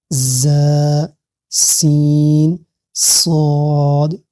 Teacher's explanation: سیٹی کی آواز تینوں میں ضرور آنی چاہیے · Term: سیٹی والے حروف